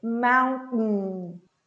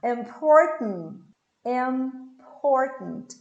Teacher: Forma o T, engole esse T. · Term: glottal T